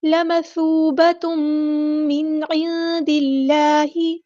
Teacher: تا کے اوپر تنوین ہے، تنوین کے بعد آیا میم تو ادغام مائل غنہ ہوگا